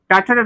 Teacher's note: ठ टाटा को हम लोग मुर्धा से बोलेंगे